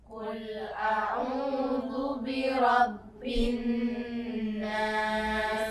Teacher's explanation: Berarti alnya sama sekali tidak dibaca. Maka dari ba bi rabbin nas, ba langsung masuk ke nun. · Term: idgham syamsiyah